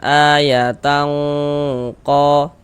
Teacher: Jadi bagian tangnya itu suaranya itu kita tahan, yang kita panjangkan sejenak sepanjang 2 harokat.